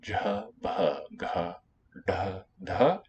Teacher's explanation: for the voice stops, it's the same order of places. Palatal, labial, velar, retroflex, dental.